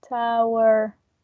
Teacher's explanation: she pronounced the r at the end